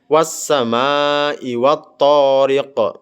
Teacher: Huruf qof pada bagian akhir yang berharakat kasrah tetap dibaca dengan disukunkan dan memantulkan. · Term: qalqalah kubra, qalqalah kubro